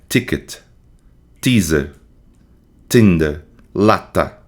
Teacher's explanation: Contato da ponta da língua com os alvéolos dentários. Lata, tá. Assim como no D, esse contato produz um som seco, tá? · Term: alveolar